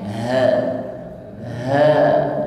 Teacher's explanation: mengucapkan Ha keluar dari makhraj tenggorokan paling bawah suaranya gemah